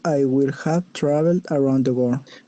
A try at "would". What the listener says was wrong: Solo la única correccióncita, o sea, de pronunciación, unas 2 cositas, ¿no? No le pronunciemos, sí, mejor si no le pronunciamos wool, como con L, sino would, como con D, ¿no? Would. Todas esas should, could, would, ¿no? La L no nos suena.